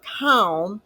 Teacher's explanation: spelling is c-a-l-m in shorthand we write what we hear so you do not hear the L so it's not written it's k-a-m and the middle sound of a is ah and